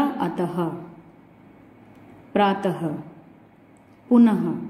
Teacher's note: तो जो विसर्ग होते हैं वो हा की आवाज निकलती है उनसे, हा का उच्चारण आता है वहां से।